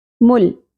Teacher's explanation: لام ساکن پہ قلقلہ نہیں ہونا چاہیے